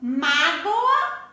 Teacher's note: Então, o som do O não veio na escrita, sim. É com O, mas o sonzinho dele veio o sonzinho do U, por isso que ele é considerado uma semivogal.